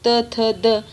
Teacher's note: जेव्हा उच्चार करतो तेव्हा आपले जे दात वरचे दात असतात त्याच्या पाठीमागच्या साईडला जिभेचा स्पर्श होतो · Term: दंत्य वर्ण